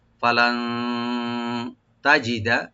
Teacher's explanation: ফা ওপেন থাকবেন, লাম ওপেন রেখে নুন সাকিন এখানে আমরা একটু ইখফা করব, লাইট গুন্না